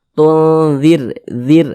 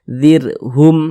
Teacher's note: pangkal lisan kita itu tidak naik terangkat ke atas, ditipiskan huruf ronya. Tunzir, zir, nah, tipis seperti itu. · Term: dibaca tipis